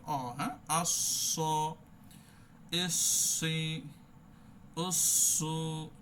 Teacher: উসু যেমন আমরা সুকুনও ধরেছিলাম এখানেও ধরবো আর সদ হবে একটু মোটা প্রকৃতির